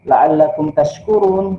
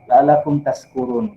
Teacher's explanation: seharusnya dibaca dengan shin dari kata syakara, dia rubah misalkan la'allakum tashkurun, dia rubah menjadi pakai sin, la'allakum tashkurun dari kata sakara.